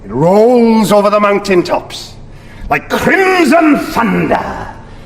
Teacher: listen to how he rolls his R's slightly